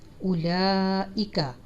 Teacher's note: اولا پہ یہ درمیانی مد پڑی ہوئی ہے جو 4 سے 5 انگلی کے برابر، اس کی آواز کھینچے گی اور نیچے حمزہ ہے اس کی بھی آواز چھوٹی سی نکالی جائے گی۔